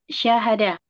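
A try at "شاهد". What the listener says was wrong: Nah, panjang.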